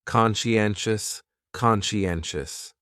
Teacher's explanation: conscientious has 4 syllables, and the stress is on that third syllable